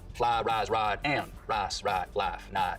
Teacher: In most of the Piney Woods belt, though, there's always been what we can describe as full price smoothing, where some Southerners smooth the diphthong in words like fly, rise, and ride, but use diphthong in rice and right.